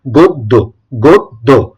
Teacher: অ এর উচ্চারণটা হবে ওকারের মত